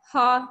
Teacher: कंठ स्थान से बोला जाने वाला ऊष्म व्यंजन